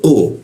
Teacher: huruf qu posisinya di siku tenggorokan lidahnya kita naikkan ya qu tidak Ada buusan udar ketika membaca huruf ku.